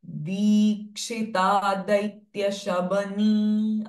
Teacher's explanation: Di is Dirgha, Kshi is Rasva.